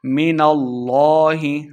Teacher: میم مشدد ہے، غنہ کر کے پڑھنا ہے. من اللہ لفظ اللہ کا لام موٹا کر کے پڑھیں گے